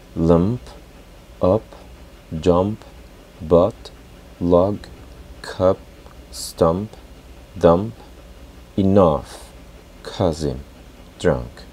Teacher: Este sonido no lo tenemos en español, pero yo lo pondría como una E pequeña o una E minúscula pequeña, apenas suena. O también la podríamos pronunciar como una O, ¿ya? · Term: Mr. Cup